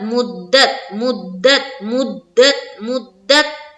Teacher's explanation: تو آواز ہم کو روک دینی ہے کیونکہ تا قلقلہ والا حروف نہیں ہے